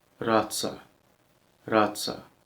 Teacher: The letter R is trilled just a bit. · It's not that strong, but it has a little trill.